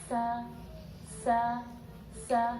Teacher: Kalau safir huruf sin tidak seperti suara lebah, tapi suaranya lebih lembut. Sa, seperti itu.